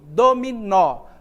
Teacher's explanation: pronunciada com mais força é a última é um nó certo então a gente diz que o nó é a sílaba tônica da palavra